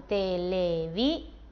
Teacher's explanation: esto ya nos indica que no estamos ante una palabra llana Esta es una palabra aguda porque la sílaba tónica es la última